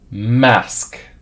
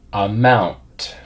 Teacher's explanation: The rest of the mouth is in a neutral position. All that's happening is the lips come together and you make the voiced vibration sound.